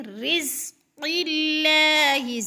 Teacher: مر، را کو تھوڑا سا سختی سے پڑھیں گے، رزق اللہ، زا کو سیٹی کی آواز میں سختی سے